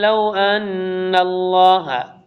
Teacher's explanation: غنہ اور ادغام دونوں ایک ساتھ ہے کیونکہ نون ہے اور مشدد ہے